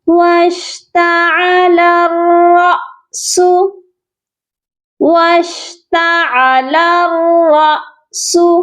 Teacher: الف کے اوپر جب جزم آتی ہے تو یہ حمزہ بنتا ہے، وہ بھی ساکن والا، اور حمزہ ساکن کو جھٹکا دے کر پڑھا جاتا ہے۔ یہاں پر ہم را سو کر کے نہیں پڑھیں گے، را الف نہیں پڑھیں گے، بلکہ را حمزہ زبر را، جھٹکا دینا ہے آپ نے، یہ پڑھا جائے گا واشتعل الرأس، واشتعل الرأس، ٹھیک ہے۔